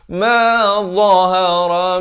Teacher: Dia macam huruf zal tadi, cuma bunyinya tebal. Ujung lidah itu keluar.